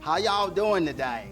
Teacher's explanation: it has a much more of a southern drawl. Elongating those vowels a little bit. And saying y'all every sentence.